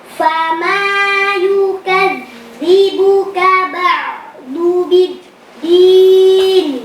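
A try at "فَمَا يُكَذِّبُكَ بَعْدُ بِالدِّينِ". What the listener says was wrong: Fama yukadzibuka ba'du. Pakai dal, bukan pakai dhad. Bukan ba'du, enggak, tapi ba'du. Makhrajnya di ujung lidah tempelin ke pangkal gigi seri atas. Coba ba'du, antum ba'du.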